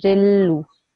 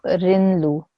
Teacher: Yeah, so I make this, I take away one of the strokes, and this becomes a Ri. So then when I join the Ri with the Lam, I'm assimilating the Ra and the Lam. And I will say Rillu, not Rinlu.